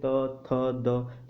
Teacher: दंत्य व्यंजन मतलब हमारी जीभ का जो अगला भाग है वो दांतों के आंतरिक भाग के साथ, ठीक है, वो स्पर्श करता है